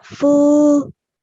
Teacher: So here this waw sakin is an example of waw mad because the previous letter has a dhamma stroke on top. So you have to prolong it for 2 seconds.